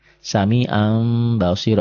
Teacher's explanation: bunyi Nun matinya berubah menjadi mim mati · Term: iqlab